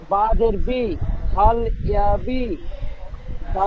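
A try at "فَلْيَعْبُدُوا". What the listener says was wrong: বা জের নই, বার উপরে পেশ আছে, দেখেন পেশ, বা পেশ বু, ফাল ইয়া বু। দাল পেশ দু নই, ফালইয়াবু, বা পেশ বু, ফালইয়াবু।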